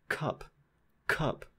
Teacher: there's a puff of air in that cup in the word cup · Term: aspirated K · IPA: [ˈkʰʌp]